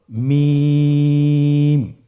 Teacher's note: হরফটির উচ্চারণ স্থান 2 ঠোঁটের শুকনো স্থান থেকে উচ্চারিত হয়